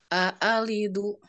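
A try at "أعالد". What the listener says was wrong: Bukan a. Nah, ini tebal. A. Harusnya a tipis.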